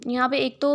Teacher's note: ایک تو میم مشدد ہے اس لیے غنہ کرے، دوسرا یہاں پہ ہم اقلاب کا قاعدہ یوز کر رہے ہیں، ٹھیک ہے۔